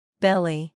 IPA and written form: ˈbɛl i (Belly)